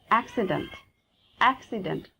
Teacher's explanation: Actually, the sound will be between A and E. The phoneme sound should be A, A.